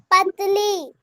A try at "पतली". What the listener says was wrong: पाताली नहीं होता है, पतली। पाताली नहीं, पतली बोलो, पतली, ठीक है?